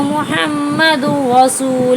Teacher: یہاں تنوین کے بعد را آیا تو ہم نے اس کو تنوین کو را سے ملا دیا مگر غنہ کوئی نہیں کیا